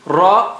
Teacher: Ra is thick, Ra is high sounding.